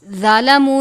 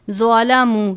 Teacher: ہے، یری الذین ظلموا، ضوابی حروف مستعلیہ میں سے ہے تو اس کو ظالموا نہیں پڑھنا بلکہ ظلموا یعنی ضا کو پر کر کے ، واو سے پہلے پیش ہے، واو مدہ ہو رہا ہے،